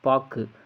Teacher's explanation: சொல்லின் இறுதியில் வரும்பொழுது ஒரு மாத்திரைக்கு பதிலாக அரை மாத்திரை அளவு ஒலிக்கிறது. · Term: குற்றிய லுகரம்